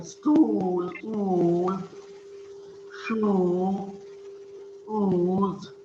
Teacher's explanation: Back, close, and Rounded vowel.